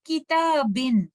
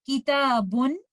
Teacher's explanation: और तनवीन के अंदर नून साकिना छुपा हुआ होता है, ये आपको देखने में तो नजर नहीं आता, लेकिन जब आप तनवीन की अदायगी करते हैं तो नून साकिना आपके प्रोनाउंसिएशन में तो आता है, लेकिन लिखा हुआ नजर नहीं आता